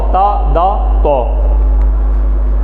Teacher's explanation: زبان کی نوک اوپر کے دانتوں کی اندر جڑ سے لگتی ہے. زبان کی نوک سامنے کے جو 2 دانت ہیں اوپر والے، جڑ سے لگتی ہے اندر والی سائڈ پہ، اندر جڑ پہ.